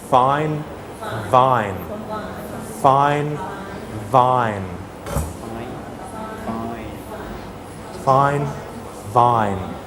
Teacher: It's the same as fa, but you have to add some voice. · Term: voiced